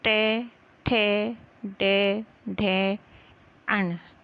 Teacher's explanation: जो दांत के पीछे का खुरदरा स्थान है मूर्धा, वहाँ पे हमारी जिह्वा स्पर्श करती है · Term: मूर्धन्य